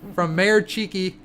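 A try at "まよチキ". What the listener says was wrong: Did you just say Mayor Chiki? It's not Mayor, it's Mayo, like mayonnaise. Mayo Chiki.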